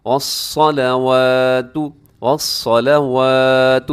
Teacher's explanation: स्वाद मोटा है और वाव के ऊपर खड़ा ज़बर की वजह से हम लंबा करते हैं